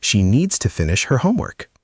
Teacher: The stressed syllables are needs, finish, and homework.